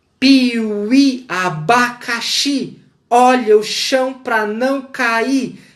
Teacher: o barulho do trem que é produzido mediante a oposição entre fricativos e oclusivos